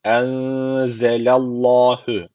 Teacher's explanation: Allah lafzı kalın okuyacak çünkü öncesi harf üstten bağlanıyor.